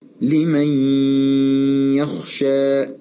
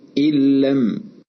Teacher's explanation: أن إدغام النون الساكنة في الياء كان مصحوبا بغنة، كما نلاحظ في المثال الثاني أن إدغام النون الساكنة في اللام تم بدون غنة